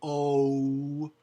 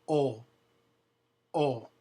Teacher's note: There's no U at the end in Spanish.